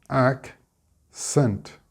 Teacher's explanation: Split the C's and we get accent with the stress on the ac.